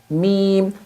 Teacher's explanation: میم کا مخرج دونوں ہونٹوں کا تر حصہ، تر یعنی کہ کچا حصہ، میم۔ با کا مخرج جو تھا وہ دونوں ہونٹوں کے خشک حصے سے ملنے کے بعد با بنتا ہے، لیکن جب دونوں ہونٹوں کا تر حصہ یعنی کہ کچا حصہ جب ملتا ہے تو بنتا ہے میم۔